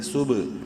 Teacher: سین با پیش صبح، با حروف قلقلہ میں سے ہے، ساکن ہے، قلقلہ کریں گے